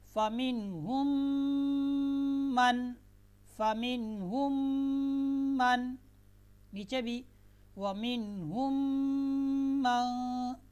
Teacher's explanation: یہاں پر دیکھیں میم ساکن آپ کو نظر آ رہی ہے، اور میم ساکن کے بعد میم آ جائے، ٹھیک ہے، تو پہلی میم کو دوسری میم میں ملائیں گے اور غنہ بھی ہوگا